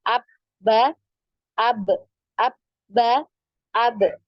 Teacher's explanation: Jadi bisa kita rasakan ya ada pertemuan di antara kedua bibir. Jadi bisa ditarik kesimpulan bahwa makhraj dari huruf ba ini adalah di kedua bibir ya.